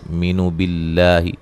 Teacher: لفظ اللہ کو باریک پڑھیں گے، اس سے پہلے زیر ہے